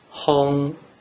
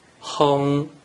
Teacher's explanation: combine the consonant “h” and vowel “ong” together and pronounce it with the first tone